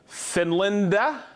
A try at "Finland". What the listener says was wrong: The A is silent.